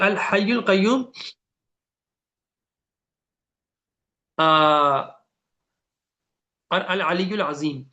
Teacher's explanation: الحی القیوم اور العلی العظیم، یہ سارے کے سارے حروف جو ہے نا وہ حلق سے نکلتے ہیں. ٹھیک ہے، قاف بھی، ہا بھی، عین بھی.